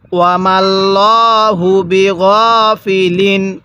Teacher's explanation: আল্লাহ শব্দের লামটা মোটা করে পড়ছি